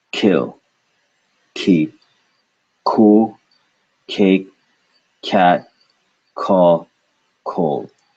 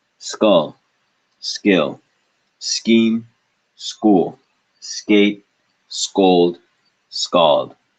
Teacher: You should have felt a big rush of air on your hand when you said K and C at the beginning of these words. Whereas this set of words, for the K and C after the S, you should have felt no air or very, very, very little air. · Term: aspiration